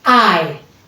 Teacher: Remember, the tongue moved from A to E.